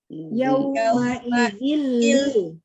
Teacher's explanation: jadi tidak ada ditahan dua harokat, itu nggak ada, karena tidak ada gunnah. Jadi jangan yauma idzil.